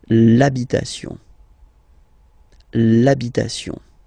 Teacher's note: Even if you've got this H, then the first sound you hear is A. Okay, so for the same reason you will have to take this A away, and then you get this l'habitation.